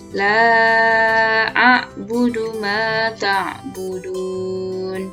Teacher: la di sini dibaca panjang 5 harokat atau ketukan dan dinamakan mad jaiz munfasil.